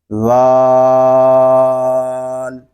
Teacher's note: یہ حرف جو ہے یہ زبان کا سرا اور اوپر کے دانتوں کے اندرونی کنارے سے ادا ہوتا ہے